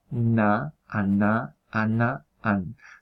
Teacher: Se pronunciaría con la punta de la lengua tocando la cara interior de los dientes de arriba. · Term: nasal dental